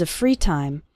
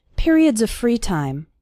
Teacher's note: the word of runs into the word free